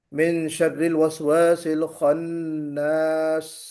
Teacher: سین کی سیٹی بھی بجنا ہے، اس میں صفت ہمس بھی ہے اور صفت رخوت بھی ہے سین میں، اور صفیر بھی ہے، تینوں چیزیں ہیں، تو ہمیں اس کا خیال کرتے ہوئے پڑھنا ہے۔